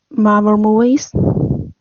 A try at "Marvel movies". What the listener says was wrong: Yeah, almost. I think you're not really hitting the V sound in Marvel. Marvel.